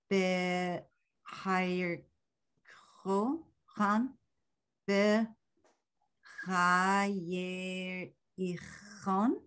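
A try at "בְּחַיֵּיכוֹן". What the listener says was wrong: I can't tell if you're saying a resh. There's no R.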